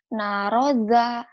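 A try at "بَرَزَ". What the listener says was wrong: terbalik. Titik 1 di bawah ba. Titiknya naik jadi nun.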